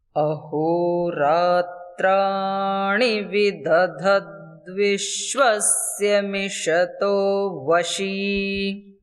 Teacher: अहोरात्राणि, अ भी अनुदात्त है, हो भी अनुदात्त है, रा भी अनुदात्त है, तीनों कंठ के नीचे स्वर से बोले जाएंगे।